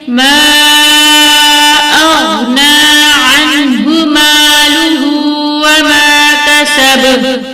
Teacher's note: با پر قلقلہ ہوگا، لیکن یہاں پر قلقلہ کبرا ہوگا، کیونکہ با کے اوپر تشدید نہیں ہے